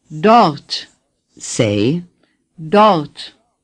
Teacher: the R is hardly pronounced.